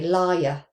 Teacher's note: So, I would say liar. Can you hear that y sound in there? Now, this isn't a dip thong. · In some accents, such as mine, I would also add the voiced palatal approximant in there.